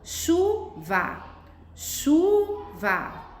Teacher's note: Qual que eu falo com mais força? O chu. Então, eu pinto o chu de amarelo.